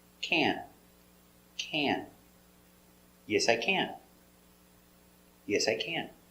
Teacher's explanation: It's a little more closed and it's a little more nasal in your nose.